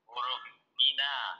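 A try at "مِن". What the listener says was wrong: Min. Min, bukan mina. Min.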